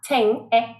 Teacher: So for that last ing sound, we are using the same vowel sound we already looked at, the short sound, ting, and we have the ng. And that is a very nasal sound. That means you're using your nose.